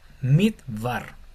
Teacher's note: como tiene solamente la jire, que es una vocal corta, esta e no se pronuncia, esta lleva sería midvar por vocal breve.